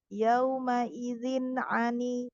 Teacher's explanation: Jadi tanwinnya jelas. Izin ani ya, tidak ada dengung, tidak ada gunah ya. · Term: izhar